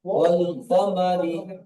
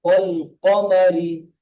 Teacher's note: ক, এটি পুর হরফ, মুখ গোল করে উচ্চারণ হবে